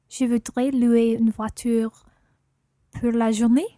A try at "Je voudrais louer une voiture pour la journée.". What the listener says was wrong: Yeah, pour la journée, pour la journée.